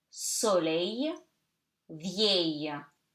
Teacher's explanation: Remember, I told you EL, E double L gives you Y. Okay, so you read the E like A, open A. Okay, so it gives you A.